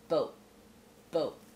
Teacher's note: no truly aspirated tea on that boat just Boat Boat with the glot te I know it might